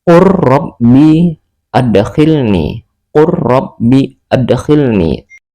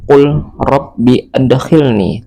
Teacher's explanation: Maka cara membacanya langsung dimasukkan ke dalam huruf ro.